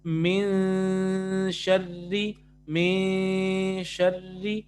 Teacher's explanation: آپ پڑھیں گے من شرری, من شرری. آپ من نون پروناؤنس نہیں کریں گے, بلکہ آپ یہاں پہ اخفا کریں گے